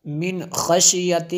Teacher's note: نون ساکن ہے، اس کے بعد خا حروف حلقیہ میں سے غنہ نہیں ہوا